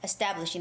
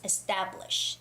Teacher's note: And the word establish, TA has a stress, so it's establish.